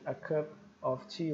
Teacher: bom a a gente chama isso de Linking Word link Sounds são sons que a gente faz link quase como se fosse uma palavra só